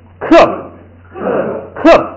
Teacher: 第二个呢，后边这个爬呢要带一个波的音，这个波的音呢也是不读出来，光做一个发波的那个口型就行了。这样一综合，这个音怎么读呢？就读克，哎，元音变成变成科呢一声变成四声变成克，然后 发完这个克呢，最后口型要做一个发波的那个口型，克，等于就是把嘴闭上了